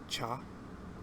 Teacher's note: the cha sound is the T and SH sound